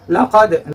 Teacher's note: ketika Dal berbaris sukun maka itu dibaca dengan suara terpantul itu namanya qalqal ya laqad insana nun sukun ketemu sa itu